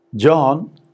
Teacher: starts high and then comes down rising starts low goes up fall rise again is starting high coming low go up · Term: falling rising